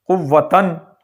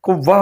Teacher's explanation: وقف کی حالت میں ہم نے اس کو گول تا کو ہا ساکن کر دینا ہے